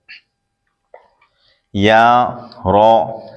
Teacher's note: یا زبان کے درمیان تالو کے درمیان سے ادا ہوتا ہے، رو زبان کا کنارہ دانتوں کی جڑ کی تالو کی جانب سے ادا ہوتا ہے